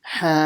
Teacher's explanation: See how I paused before I said the ja sound? As if I paused for half a second. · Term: jim mushaddad